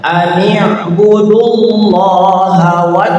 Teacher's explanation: Jadi wawunya abaikan, itu wawu nggak ada. Masuklah kepada lafaz Allah, namanya lafzul jalalah, dibaca tafkhim. Lafaz Allah dibaca tebal ya.